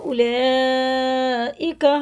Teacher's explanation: ये मध्य मुत्तसिल है, 4-5 अलिफ के बराबर इसे खींच के पढ़ना है